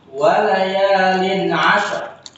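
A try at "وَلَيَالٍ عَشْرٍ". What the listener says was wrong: Pakai shin, sya. Ashar.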